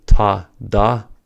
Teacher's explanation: For the ta, da pair, the stop happens at the tooth ridge, which is also called the alveolar ridge. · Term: plosives